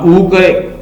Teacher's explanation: अब ऊ करते हैं आप तो क्या होगा, आपके जो लिप्स हैं वो आगे की तरफ होते हैं, इसको कहते हैं राउंड